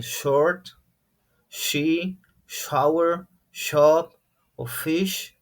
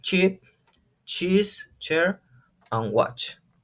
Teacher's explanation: And the other one, very similar because it's the same movement, the same shape in your mouth, but they are unvoiced. Both of them are unvoiced, but the last one is a little bit stronger.